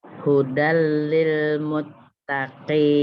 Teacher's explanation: Hudal lil muttaqin. Jadi tanwin ketemu lam, jadi bukan hudan tapi hudal. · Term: idgham bilaguna